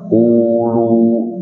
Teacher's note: wawunya mati tidak kelihatan kan, hanya memanjang